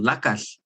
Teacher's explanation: your tongue is in the position of an L but you're not voicing it like an L with your throat instead the air is coming out the sides of your tongue